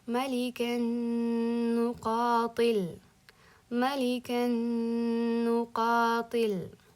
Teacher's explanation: Nunni ikkita bildirilmaydi, idg'om qilinadi va g'unna qilinadi.